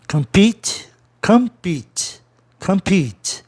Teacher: Tá certo, vogal consoante é no fim, verbo, a vogal tônica é no E, anterior ao TE